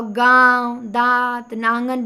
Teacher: बोलेंगे तो नाक और मुंह दोनों का काम है। इसमें दोनों से हवा निकलेगी।